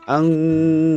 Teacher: bunyi N pada nun mati harus disamarkan seperti bunyi eng dan disertai dengan berdengung. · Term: ikhfa